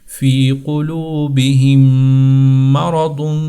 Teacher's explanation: دونوں میموں کو ملا کر ایک میم کر دیا گیا ہے۔ پھر جب میم مشدد ہوتا ہے تو اس کو غنّے کے ساتھ پڑھتے ہیں، یعنی اپنے ہونٹوں کو ملا دیتے ہیں۔